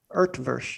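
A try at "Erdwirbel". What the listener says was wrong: Yeah. No, there's no R sound. Utvush is.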